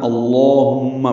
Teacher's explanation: ہم میں میم مشدد پہ غنہ ہے